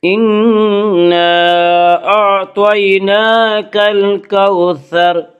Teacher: انا نون مشدد غنہ ہوگا، غنہ کی مقدار 1 الف ہے۔ انا اعطیناک، انا اعطیناک میں مد منفصل ہوگا۔